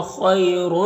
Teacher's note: یالین سے نرم آواز کے ساتھ جلد پڑھیں گے